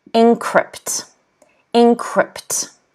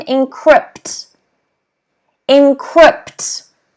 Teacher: notice that the stress again is on the second syllable